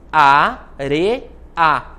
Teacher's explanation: eu posso dividir essa sílaba assim a re a separar o e do a formando um iato